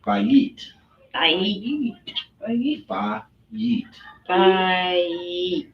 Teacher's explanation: Now, granted, we slur it together and it becomes bite.